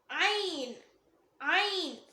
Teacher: இத தொண்டையோட மிடில்ல இருந்து வரும்.